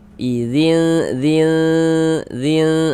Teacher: Maka ini kita baca samar dan berdengung. Yang disamarkan ini bunyi bunyi tanwinnya idzin dzin dzin.